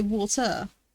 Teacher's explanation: We don't pronounce the R at the end.